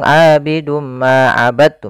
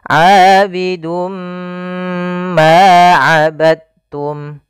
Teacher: kita masukkan tanwinnya kepada huruf mim, kemudian ditahan. Abidum ma, tahan ma, baru dilepas. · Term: idgham bi gunnah